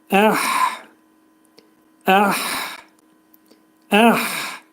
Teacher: hə hərfinin məxrəci boğazın ortasından